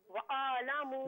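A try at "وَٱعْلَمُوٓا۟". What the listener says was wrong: नहीं, वअलमू नहीं, वाव को आइन के साथ मिलाकर पढ़ना है। वअलमू। नहीं, वअलमू नहीं है, वा लमू।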